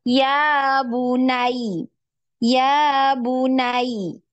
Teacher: Jadi kita bacanya nggak cuma ya bunai datar seperti itu, tapi harus ditinggikan suaranya ketika masuk di ya yang disukunkan, ya, karena di situ ada tasydid, ya. Ya bunai, ya bunai. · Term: naber, kaidah naber